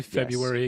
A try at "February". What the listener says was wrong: Bro pronounces the R.